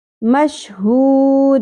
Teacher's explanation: وشاہدوں، و زبر زیادہ نہیں کھینچی جائے گی، مشہود، ہا کو اقصی حلق سے گہرائی کے ساتھ ادا کرنا ہے اور واو مدہ کو ہم 3 الف کے برابر کھینچ دیں گے مد عارض وقفی کی صورت میں